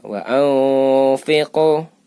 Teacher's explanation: Membaca fa ini gigi seri depan itu menyentuh bibir. Menyentuh bibir. Agak rapat.